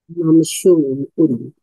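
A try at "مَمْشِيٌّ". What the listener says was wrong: mamsyiyun. Gunakan ya sebab masa huruf akhirnya ya, menggunakan ya. Jadi mamsyiyun.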